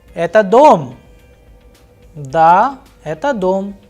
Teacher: in the first sentence where the person is asking a question, eta dom, there is a rise in the tone, whereas when answering the question, da, eta dom, there is a fall in the tone. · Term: intonation